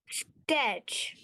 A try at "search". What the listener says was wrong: search. Search. There is no a T. Search.